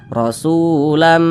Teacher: dibaca rasulan tapi langsung dimasukkan ke huruf mim rasulam kemudian didengungkan didengungkan itu suaranya itu kita tahan atau kita panjangkan panjangnya itu dua harakat atau kira-kira dua ketukan